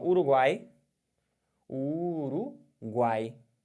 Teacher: no nariz porque porque você não tem nenhum som nasal aqui o som de três vogais faladas pela boca apenas tritongo oral